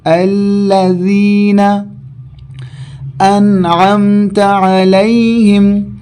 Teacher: الذین میں لام باریک ہیں، ذال کو زبان کے کنارے کو اوپر کے دانتوں کے کنارے سے لگا کر ادا کریں گے